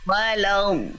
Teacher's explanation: Lamnya jangan ikut tebal, dotnya saja yang tebal.